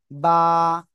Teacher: বা কোন জায়গা থেকে উচ্চারিত হয় মনে আছে? দুই ঠোঁট, দুই ঠোঁটের ভিজা অংশ থেকে বা উচ্চারিত হয়